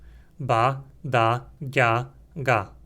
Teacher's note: havia 4 oclusivas sonoras